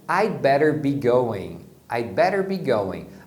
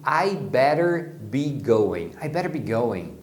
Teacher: Às vezes as pessoas falam rápido e você só ouve I better be going.